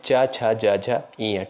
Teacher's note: गया था च वर्ग जो है किसके अंतर्गत आता है दोस्तों च वर्ग का जो है उच्चारण स्थान होता है तालू